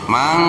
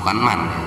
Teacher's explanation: Cara membacanya harus dibaca samar. Jadi yang disamarkannya itu suara nun sukunnya atau suara tanwinnya, enggak terdengar jelas seperti nun sukun atau tanwin. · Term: ikhfa